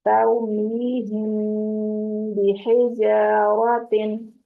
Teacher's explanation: यहाँ पर मीम को आपने थोड़ी देर के लिए 2 हरकत जितना रोक के रखनी है, आवाज नाक में खफी करना है मीम को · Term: इख्फाए शफवी